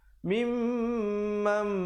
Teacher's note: Nun mati bertemu mim. Asalnya mim bari atas bertemu nun bunyi man, tapi bila datang mim jadi mam, dengung 2 harakat. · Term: idgham bi gunnah